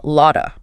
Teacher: A lot of very commonly becomes lotta in spoken English.